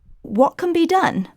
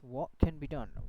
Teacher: it's a glottal T here. It's a glottal stop.